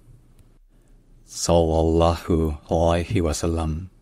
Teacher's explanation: le premier son c'est un S emphatique c'est-à-dire en terme technique c'est un S qui est faringalisé donc